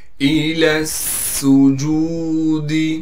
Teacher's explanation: سین کو سیٹی ادا کر کے نکالنا ہے، سین پر تشدید ہونے کی وجہ سے تھوڑا ٹھہراؤ کریں گے